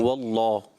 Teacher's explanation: اللہ پاک کا لام، اس سے پہلے زبر آ رہا ہے واللہ، تو یہ موٹا پڑھنا ہوتا ہے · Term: جلالت کا لام